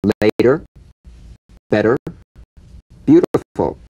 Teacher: the medial T becomes a soft D. All right? It's not a complete D, but it goes toward a D.